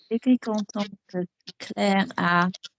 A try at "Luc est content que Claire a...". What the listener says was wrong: Keep the previous word going. What are you thinking? It's fine to take 16 seconds on the but keep the previous word going.